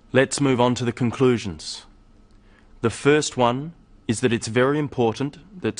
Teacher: you'll notice small pauses in the middle of sentences, after phrases. These help the listener to follow what is being said.